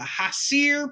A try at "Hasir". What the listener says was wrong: You're still pronouncing it too strongly. It'd be Hayseer.